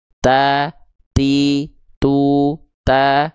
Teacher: huruf ta harus keluar percikan nafas